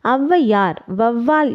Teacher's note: சொற்களின் முதலில் வரும்பொழுது தனக்குரிய இரண்டு மாத்திரை அளவிலிருந்து குறைந்து ஒன்றரை மாத்திரை அளவில் ஒலிக்கிறது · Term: அவகாரக் குறுக்கம்